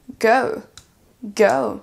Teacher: Vous avez un O suivi d'un OU derrière.